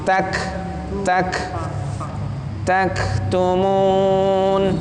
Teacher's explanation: Hamas sifat hurufnya kaf. Jadi keluar napas sedikit.